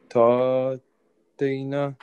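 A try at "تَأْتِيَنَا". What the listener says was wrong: Na is with alif. Mad. Ta. Soft jerking sound, yeah? Hamza.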